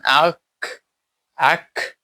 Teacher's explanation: জিহ্বার মূলের নিকটবর্তী স্থান এবং তালুর কিছু অংশ এখান থেকে ছোটখা যেটা সেটা উচ্চারিত হয় যেমন আক আক তোমরা একটা নিজেরা উচ্চারণ করে দেখবে যে জিহ্বার মূল্য নিকট স্থান এবং তালুতে গিয়ে এই জিহ্বাটা সংঘর্ষ হয়। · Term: ছোট কাফের মাখরাজ, ছোট কাফ